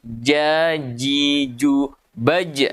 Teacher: makhrajnya tengah lidah ketemu tengah langit-langit atas. Ya, tengah lidah bertemu tengah langit-langit atas. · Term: huruf jim